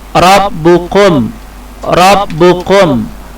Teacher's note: huruf ro hukum bacaannya harus tafkhim atau dibaca tebal